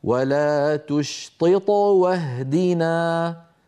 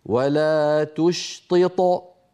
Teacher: فكما نطقتها الآن قلقلتها صغرى، ولو وقفت وقلت ولا تشطط فصارت قلقلتها عندئذ كبرى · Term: القلقلة